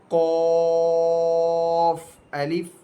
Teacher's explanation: قاف کے بارے میں ہم نے پیچھے سیکھا کہ زبان کی جڑ اور تالو کے نرم حصے سے ادا ہوتا ہے